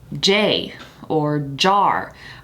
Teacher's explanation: vibration of the vocal chords when a sound is articulated so for j when you pronounce it in a word it vibrates the vocal chords · So for J, when you pronounce it in a word, it vibrates the vocal cords. If you say a word like J, or jar, or whatever, the vibration of the vocal cords starts from the get-go. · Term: j is voiced, voiced